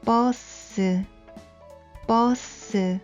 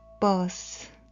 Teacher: in Korean, bus is pronounced as two syllables without stress. Bus, bus. But in English, b and s are not separated and pronounced as one syllable